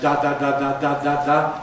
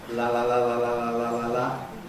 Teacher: With a ‘lateral’, on the other hand, an [l] sound, [l(a)] …, the air can escape freely at the sides, because the side rims are not raised